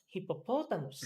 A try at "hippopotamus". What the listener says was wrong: Yes.